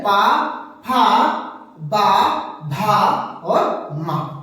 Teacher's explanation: दोनों ओठ मिल रहे हैं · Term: ओष्ठ व्यंजन वर्ण